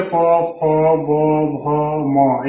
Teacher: ये सब कहां आते हैं, कहां से उच्चारित होते हैं, तो ओष्ट से उच्चारित होते हैं